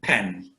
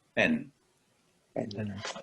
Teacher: the P in Hindi is not a breathy one like English.